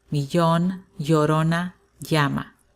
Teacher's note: In other countries such as Mexico, it may sound more like a Y.